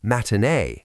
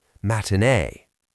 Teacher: This is another common feature of Cockney accents, replacing the T in the middle of a word with a glottal stop